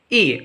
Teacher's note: when the tongue is placed in a high position it will produce the vowel sound e